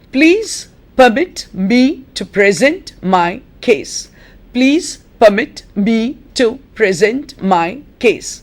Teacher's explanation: Case is a monosyllabic word, but it's an important word in the sentence, and therefore it does have to take the accent.